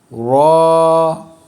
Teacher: را کو تھوڑا پر کر کے پڑھتے ہیں، ہونٹوں کو تھوڑا سا سٹارٹ میں گول کرتے ہیں، تھوڑا سا، جیسے را۔